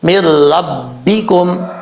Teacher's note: میم کو جب را سے ملائیں گے تو نون بیچ میں گر جائے گا، میم را زیر مر، را بعد رب، مر ربکم، اس چیز کا آپ نے خاص خیال رکھنا ہے۔ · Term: ادغام